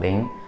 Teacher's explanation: you just simply read out 0 as ling, L-I-N-G, second tone ling